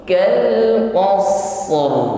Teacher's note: Maka kita tampakkan sifat yang menyertai huruf ra, yaitu takrir, irti'adu tarful lisan, bergetar, getarannya tebal